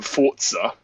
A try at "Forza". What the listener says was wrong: There's no T in it. Forza, mate. Forza.